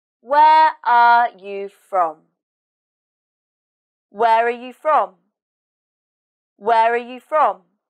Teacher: in this sentence the stress is on where and from and the intonation goes down at the end